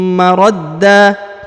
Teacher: Wa khairum maradda ya, huruf da ditahan ditekan lalu dipanjangkan 2 harokat